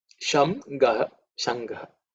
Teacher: Shangaha has two parts to that word, which is Sham and Gaha. That Sham becomes Ng because of again Sandhi.